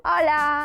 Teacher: Ola, o saúdo é con o aberto